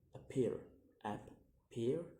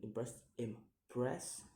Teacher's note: it has two syllables, and the stress is mostly about 80% put on the second syllable